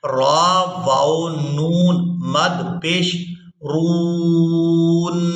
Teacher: میم پیش مو تا مو اور اس کے بعد را کو واو مدہ کے ساتھ ملاتے ہوئے کھینچنا ہے اور اس کے بعد نون مشدد کے ساتھ ملانا ہے.